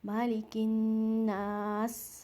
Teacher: again अलिफ मद्दिया, यहाँ पर आपने नून को स्ट्रेच करना है, पहले नून के को गुन्ना के साथ पढ़ना है, मालिकिन, मालिकिन, और फिर यहाँ आपने नून को स्ट्रेच भी करना है, हरकतैन 2 सेकंड आपने इसको लंबा करना है